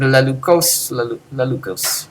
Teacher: the participle in that tense will be emphasized on the last syllable